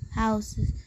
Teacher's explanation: And the learner omitted the sound S on the word houses